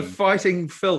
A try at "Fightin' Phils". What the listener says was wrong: The Fightin' Phils. Spelt Fighttin, so no G on the end, and Phils, Phils, the Fightin' Phils.